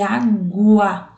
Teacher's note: a palavra água, quando pronunciada, aparece o som da letra U